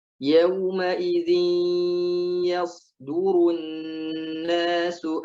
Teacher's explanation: Yauma idzin ya, masuk ke hidung. Yauma idzin ya, jangan sampai yauma idzi nggak masuk ke hidung. Ada idgham bi gunnah.